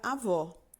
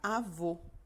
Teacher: o acento agudo identifica um som aberto, como a palavra avó. Já o acento circunflexo identifica um som fechado, como, por exemplo, na palavra avô.